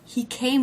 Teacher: In the sentence, he came with his friends. The word with, a preposition, low in pitch, unstressed.